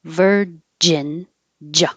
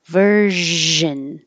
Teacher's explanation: If you stop the airflow, if your tongue comes up and touches the top of your mouth and blocks the airflow, then it sounds like a J